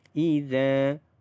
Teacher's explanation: Alif sebelumnya berbaris di atas, maka za itu dibaca dengan panjang 2 harakat. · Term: mad asli huruf alif